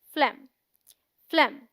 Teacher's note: PHLEGM is one syllable and sounds like phlegm, which rhymes with hem, short E sound. We say phlegm, not flame.